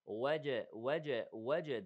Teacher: the جيم here has قلقلة